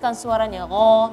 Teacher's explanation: huruf 'ghain' harus dipertebal dan bunyinya diperjelas